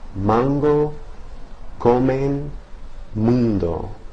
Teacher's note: Usually vowels between two nasal consonants are nasalized to hear the vowel sound resonate in the nasal cavity as well, even if only slightly.